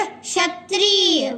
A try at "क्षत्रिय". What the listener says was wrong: देखो, इसको छ नहीं बोलना है, हमको क्या बोलना है? श। यानी हमको षटकोण वाला स और छ के बीच का जो उच्चारण होता है श, क्षत्रिय, ये बोलना है।